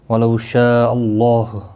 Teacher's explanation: اللہ کا لام زبر کی وجہ سے پر پڑھا جائے گا